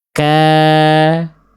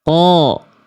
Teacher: Kalau qof dia menjadi tebal padahal sama-sama pangkal lidah. Karena ketika berharakat ketika berharakat pangkal lidahnya tetap naik.